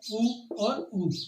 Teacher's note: ऊ और ऊ, ये यहाँ पे अपने पास में ओष्टे वर्ण के अंतर्गत गिने जाते हैं, क्योंकि इनको बोलते समय होठों का अधिक प्रयोग किया जाता है